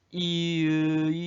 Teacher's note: 이랑 을을 발음할 때 혀의 위치 앞뒤로 가는 거 빼고는 입 모양이 다른 건 바뀌는 게 없는 거야. 그냥 혀의 위치만 그대로 앞뒤로 움직이는 거야.